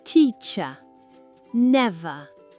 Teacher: Le ER est la version faible du son rhotique dans les syllabes non accentuées. Note, en américain, on l'écrit ER.